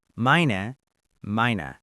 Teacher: Stress the first syllable.